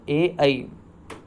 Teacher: जब हम ए और ऐ को बोल रहे होते हैं तब हमारा उच्चारण स्थल जो है वो क्या होता है, कंठ तालु होता है। कंठ हमारे गले के साथ साथ जीभ हमारी तालु के पास जाती है, तो इसलिए इनका उच्चारण स्थल क्या माना जाता है, कंठ तालव्य या कंठ तालु माना जाता है।